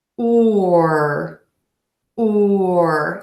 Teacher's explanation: you can see my mouth is tense my mouth is moving and the vowel is long because I'm moving from very puckered lips or too rounded lips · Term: tense moving long vowel